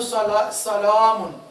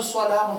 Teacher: سین بھی باریک، لام بھی باریک، الف بھی اور میم